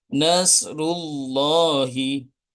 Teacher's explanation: lafaz Allah yang dibaca tafhim yaitu lafaz Allah yang didahului harakat dommah · lafaz Allah dibaca tafkhim atau tebal